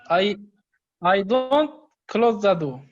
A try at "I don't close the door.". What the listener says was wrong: Good. Perfect.